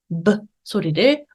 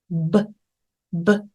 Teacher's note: 귀로는들을 수 있을 거예요 a 아 A 아 다음입니다 알파벳 be 가볍게 윗입술 아랫입술을 붙였다가 브 브 브 성대 울림 같이 울려 주세요